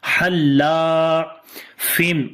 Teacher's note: ha we read from the middle of the throat, and when we connect with the lam, so we read bit strong, and also lam we long due to alif madda.